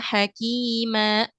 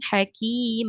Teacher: daripada mad iwad Ya tadi kesalahan di Mad iwad itu biasanya ada yang membaca seperti ditambahkan Hamzah di akhirnya